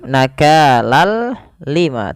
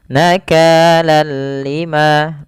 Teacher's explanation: kita memasukkan tanwin ke huruf lam, seraya kita hilangkan suara nunnya dan kita ganti dengan huruf lam. Awalnya nakalan ketemu lam, ganti dengan lam, nakalal lima, tapi tidak disertai dengan gunnah, tidak ditahan seperti ini. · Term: idgham bila gunnah